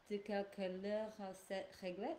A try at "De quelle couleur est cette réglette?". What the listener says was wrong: Ok, c'est bien. Ok, très bien. Parfait.